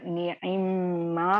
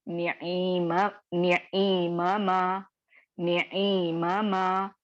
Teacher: यहाँ पर आपको पहला लेटर साकिन कर दिया गया और उसको दूसरे लेटर में मर्ज कर दिया गया मीम में